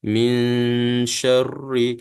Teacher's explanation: kita kena ikhfa Hakiki kita kena masukkan sembunyikan Nun dengan syim tadi kemudian kita dengung